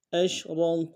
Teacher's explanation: گے، کاف کو واو کے ساتھ ملانا ہے، واو مدہ، اور واو مدہ کے اوپر مد عارضی ہے، کم سے کم دو الف دال میں کھینچیں گے۔